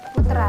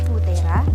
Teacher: Konsonan pertama dari kluster yang disisipi bunyi e menjadi silaba baru dengan puncak silaba pada e. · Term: Anaptiksis